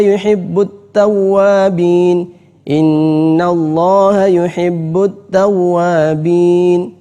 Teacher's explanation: wow bertasydid itu sering juga orang memanjangkan padahal tidak ada